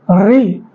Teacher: री, क्योंकि री जब आप बोलते हैं तो जो हवा हो रही है री, तो ताकत यहाँ गले से, जो हवा गले से कस के निकलती है, तो री को जो जीभ की टंग की पॉइंट है उसको वाइब्रेट करती है, तब हमारी री निकलती है। इसीलिए ये पश्च भाग इसमें इन्वॉल्व होता है, पश्च भाग, ठीक है।